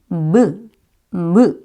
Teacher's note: 여러분 입술을 한번 그려보시면요. 이 무라는 발음이 입술을 붙였다가 떼면서 발음이 나거든요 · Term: 입술 소리